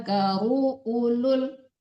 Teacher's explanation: Karunya tidak panjang juga, dipercepat ru-nya